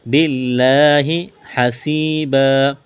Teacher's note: سین میں سی ٹی کی آواز پیدا کریں گے، سین کو باریک کرنا ہے